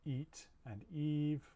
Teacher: this represents a high front unrounded vowel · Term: the tense version